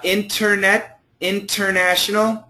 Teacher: most people do say internet with no T